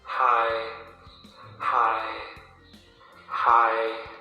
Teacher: The sound goes neither up, nor down. As if it goes in a straight line... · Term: mid tone